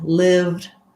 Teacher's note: we just go right from the v to the d